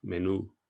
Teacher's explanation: allow that ooh sound to go longer